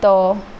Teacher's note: जो त वर्ग वाले हैं वो दंत से निकलते हैं